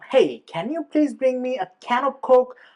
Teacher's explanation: প্রত্যেকটা কমার পরে কমার ক্ষেত্রে we will actually have a rising tone